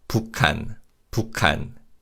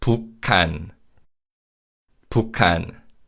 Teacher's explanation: when we say 북한, 기역 받침 assimilates with 히읗 to produce a 키읔 sound. So it's 북한, 북한.